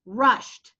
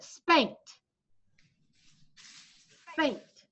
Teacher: Now it's not a T that it's spelled ED, but it sounds like a T.